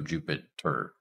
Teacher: it just goes straight to an R sound and the r is behaving like a vowel in a syllable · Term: syllabic r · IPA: [d͡ʒupɪtɚ]